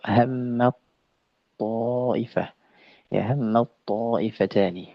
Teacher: Mad harakatnya th. Jadi ta ini yang sukun ini masuk ke huruf th. · Nah, jadi dalam bait ke-45 ya kembali apa namanya, penulis menyebutkan idgham shaghir dan dia kamil ya, dalam tingkatan kamil sempurna, hammat ta'ifat. Jadi taknya itu ya lebur, hammat ta, masuk ke huruf ta. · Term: idgham kamil